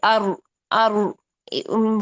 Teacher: कैसे? अर अर one time तकरार आनी चाहिए आपकी। इससे ज्यादा तकरार नहीं होनी चाहिए।